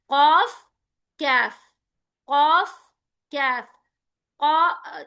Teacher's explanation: कैफ और कॉफ जो है ना, आपकी जुबान की जड़ से अदा होने वाले हैं। यानी ये जो आपकी टंग है, टंग के बाद जो परजीप होती है ना, तो उसकी वाइब्रेशन के साथ आपका कॉफ अदा होता है, उसी के थोड़ा सा नीचे से आपका काफ अदा होता है।